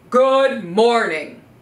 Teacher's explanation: we're gonna use a strong authority voice in a low pitch